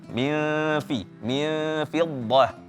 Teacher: ikhfa pada huruf fa itu ditipiskan